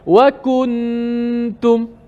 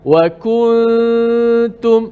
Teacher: Biar dia bunyi renggang sikit, ikhfa, sembunyikan nun mati.